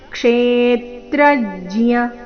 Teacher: ಆಘಾತ ಬರುತ್ತೆ ಏತದ್ಯೋವೇತಿ ತಂಪ್ರಾಹು ತಂಪ್ರಾಹು ಅಥವಾ ತಂಪ್ರಾಹು ಕ್ಷೇತ್ರಜ್ಯ ಕ್ಷೇತ್ರಜ್ಯ ಇತಿ ತದ್ವಿದಹ ಕ್ಷೇತ್ರಜ್ಯ ಮೊದಲನೇ ಎರಡು ಅಕ್ಷರಗಳ ಮೇಲೆ ಆಘಾತ